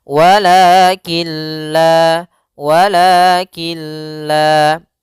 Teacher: Walakin la, kemudian killa ada hukum tajwid berupa idgham bila gunnah, yaitu adanya nun sukun bertemu dengan huruf lam. Maka cara membacanya masukkan langsung ke huruf lam dan nunnya menghilang. Maka di sini juga kita namakan dengan idgham kamil, idgham secara keseluruhan, memasukkan secara keseluruhan.